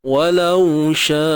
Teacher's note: Panjang sya ni 4 atau 5 harakat. Huruf mat bertemu hamzah ma'arid mat wajib muttasil 4 ataupun 5 harakat.